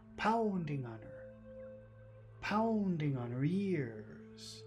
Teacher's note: The only big sound is pound, because it's the accented syllable.